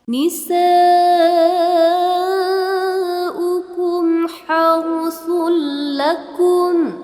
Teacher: Jadi lakumnya itu dibanting ke atas gitu bunyinya.